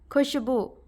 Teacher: हिंदी में तालव्य स बोलते समय जीव की नोक को तालू के पास ले जाना पड़ता है